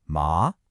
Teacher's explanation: With a rising second tone, ma, it's hemp.